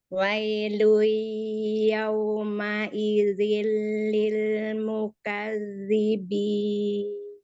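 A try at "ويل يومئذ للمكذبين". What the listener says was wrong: Langsung masuk, alirkan ke hidung suaranya. Ya, jadi jangan ada jeda walaupun sedikit. Wailui, lui, wailui yauma idzil lil mukadzibin.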